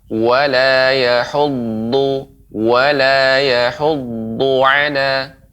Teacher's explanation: huruf dha ya. Ini pengucapannya tebal, kemudian mengenai gigi geraham atas.